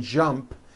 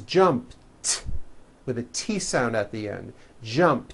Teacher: unvoiced T so let's look at the word jump for example the final sound in Jump is a p which is unvoiced